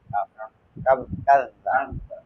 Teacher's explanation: এখানে কফ হবে না, কাফ হবে, কাফ হবে, কাফ কাফ কাফ এখানে কোনো কলকলা হবে না